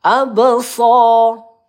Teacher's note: ab qalqalah sugro ya kita pantulkan